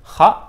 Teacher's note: pangkal lidah bertemu dengan langit-langit atasnya dan sedikit ada bunyi seperti dengkuran tapi nggak usah banyak-banyak. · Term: huruf kha